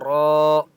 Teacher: را، الف مد زبر را، را کے اوپر بڑی مد ہے، 4 سے 5 الف کی مقدار کھینچ کر پڑھیں گے اور را کو پر پڑھیں گے